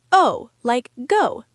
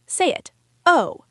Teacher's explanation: And O sounds like O, like boat or go, but shorter and crisper.